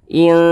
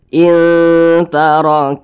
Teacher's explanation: kadar samarnya itu dia lebih tinggi daripada kadar dengungnya jadi lebih condong berbunyi n tapi disamarkan gitu kemudian kita dengungkan Nah didengungkan itu suaranya itu kita tahan Nah kita panjangkan in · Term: ikhfa Hakiki